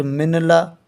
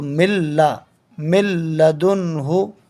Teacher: یعنی نون کو حذف کر دیں گے، ختم کر دیں گے، اور لام کو میم کو لام میں ملا دیں گے، مل لا۔ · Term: ادغام لام